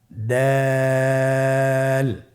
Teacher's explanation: জিহ্বার আগা সামনের উপরের দুই দাঁতের গোড়ার সঙ্গে লাগিয়ে উচ্চারিত হয়। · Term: দাল